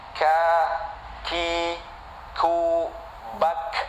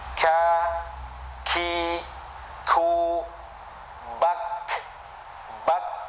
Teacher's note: Tetapi yang penting makhrajnya, tempat keluar huruf dari huruf kaf ini, yaitu pangkal lisan, depannya qaf